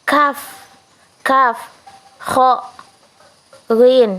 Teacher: bunyi yang dihasilkan dengan cara menempelkan belakang lidah pada langit-langit lunak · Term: bunyi dorsovelar